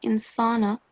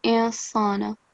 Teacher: So the noon will be silent or hidden.